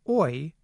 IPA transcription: ɔɪ